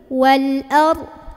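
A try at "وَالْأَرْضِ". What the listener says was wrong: ro-nya tebal. A-nya jangan sampai ardi gitu. A-nya ikut jadi kayak mau bilang o, tebal. A, a, ya buka. Pakai sisi lidah.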